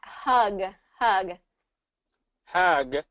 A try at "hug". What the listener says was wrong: because at first it sounded like uh somewhere between hug and hag so i want you to do i want you to do a little bit more of an uh hug